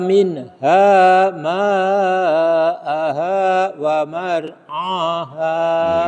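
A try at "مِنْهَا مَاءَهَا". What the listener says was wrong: Iya, cuma ma-nya yang kurang panjang tadi sebenarnya. Minha ma'aha, yang ma itu panjang sampai 5 harokat.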